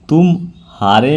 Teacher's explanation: म और ह के बीच में कुछ विराम या अवसान होता है इसी विराम को हम संगम कहते यानी तुमहारे में जो बीच